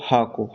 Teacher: हा को काकल या स्वर यंत्री व्यंजन बोलते हैं